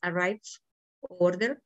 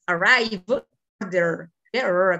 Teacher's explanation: Aquí, a diferencia de los primeros dos que mencionamos, estas consonantes en que terminan estos dos verbos son consonantes sonoras, son consonantes que nos exigen vibración en nuestra garganta